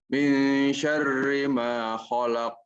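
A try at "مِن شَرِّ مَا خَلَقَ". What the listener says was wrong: Jangan dijeda. Jangan dijeda. Khalaq langsung.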